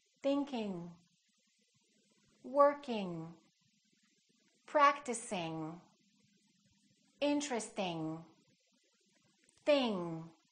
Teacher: don't release your tongue and don't just produce the n in the front it's a sound in the back · no release at all it's kind of a nasal sound